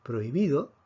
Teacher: Recordemos que la H es invisible para efectos de silabeo. Entonces, si tenemos prohibido, vemos que la fuerza cae sobre bi. Por lo tanto, si separamos esto en sílabas, tendríamos prohibido.